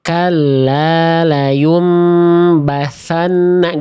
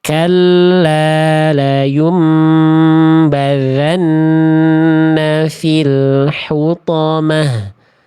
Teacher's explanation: Karena bocor nafasnya. Jadi huruf zal yang tadi saya baca salah karena bocor nafasnya, keluar angin, keluar udara